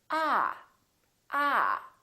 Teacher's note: your tongue touch your bottom teeth like this ah ah and this vowel is usually longer than most people who are non-native speakers tend to make it